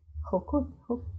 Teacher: cuando pronuncian la J, que es una consonante un poco fuerte, ellos lo hacen de una forma bien suave